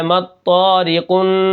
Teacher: ہم باریک پڑھیں گے کیونکہ را کے نیچے زیر ہے، مطاری، قاف کو موٹا کرنا ہے اور نون کے ساتھ ملانا ہے